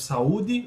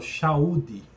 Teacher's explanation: temos o sigmatismo, que é a troca do S pelo X. Por exemplo, saúde, eu falo chaude.